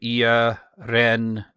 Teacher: And the emphasis is on the, it's on the Ren.